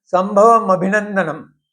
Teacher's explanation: संभवम अभिनंदनम, ये दो शब्दों से वो संधि होकर वो बना है, और उसका उच्चारण संभवम अभिनंदनम ही होना चाहिए, अ रहेगा नहीं। संभवम के वम का जो म है आधा, और अभिनंदनम का अ जो स्वर है उसका एकत्रित होके म बना हुआ है